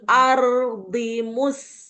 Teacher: Ardi kan ro sukun dialirkan.